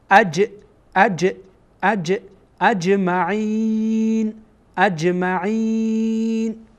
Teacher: وقتی جیم ساکن باشه از حروف قلقله قرار میگیره